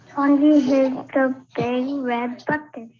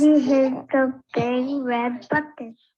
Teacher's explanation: the child sounded like they said hid rather than hit